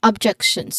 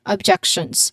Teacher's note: Pronunciation wise the stress is on the second syllable